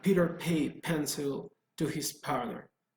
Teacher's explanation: In the case of p, notice how when you pronounce p, you don't feel anything here, you don't feel vibration, so that is voiceless. But in the case of sounds that produce a vibration here, they are voiced sounds.